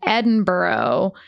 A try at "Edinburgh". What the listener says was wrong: I mean, I'm no expert, but I know it's not borough. Edinburgh, I think.